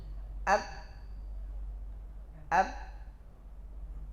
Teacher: Maka datang qalqalah, dan qalqalahnya terarah ke bawah, diarahkan ke bawah.